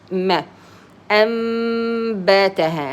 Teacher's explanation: noon, it's changed to a meme here, so you close your mouth